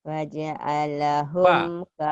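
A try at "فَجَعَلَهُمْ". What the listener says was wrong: Faja'alahum. Bukan wa tapi fa.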